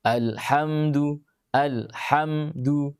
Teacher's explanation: Nah, itu ham, kita baca ham, rasakan ham, masih ada dengungan di hidung, namun sudah nakisah, sudah kurang.